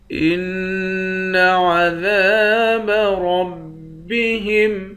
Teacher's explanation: حمزے کو نون مشدد کے ساتھ ملا کر نون پر غنہ کریں گے